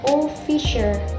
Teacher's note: The stress placed in the first syllable o, so it pronounced like officer.